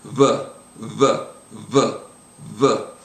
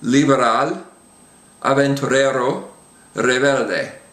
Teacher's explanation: In fact, the way I like to think of it is it's a B without touching your lips together.